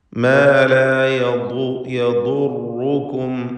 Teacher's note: നാവിൻ്റെ അരുവിൽ നിന്ന്, സൈഡിൽ നിന്നാണ് ദ്വാദിൻ്റെ മഖ്റജ്, ഉത്ഭവസ്ഥാനം. മേലെ അണപ്പല്ലുമായി ചേർത്തുകൊണ്ടാണ് ഉച്ചരിക്കുക.